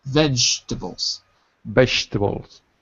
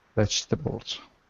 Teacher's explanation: Notice how we drop the second syllable.